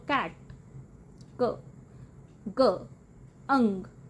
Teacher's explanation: ਵੀਲਰ ਵਿੱਚ ਜੀਭ ਦਾ ਪਿਛਲਾ ਹਿੱਸਾ ਸੌਫਟ ਪੈਲੇਟ ਨੂੰ ਟੱਚ ਕਰਦਾ ਹੈ, ਜੀਭ ਦਾ ਪਿਛਲਾ ਹਿੱਸਾ ਸੌਫਟ ਪੈਲੇਟ ਨੂੰ ਪਿੱਛੇ ਟੱਚ ਕਰਦਾ ਹੈ, ਜਿਵੇਂ ਬੋਲੋ ਕੈਟ, ਕ, ਗ, ਅੰਗ, ਇਹ ਸਾਊਂਡਸ ਆਉਂਦੀਆਂ।